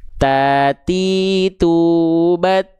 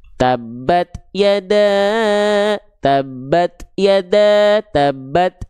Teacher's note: Jadi si ujung lidahnya dilafalkan menjulur keluar mulut.